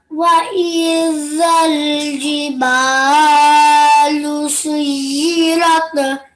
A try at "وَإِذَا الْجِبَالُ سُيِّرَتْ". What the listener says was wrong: But try not to give a jerking sound at the end. Just try saying سُيِّرَتْ. And remember, this is an alif mad.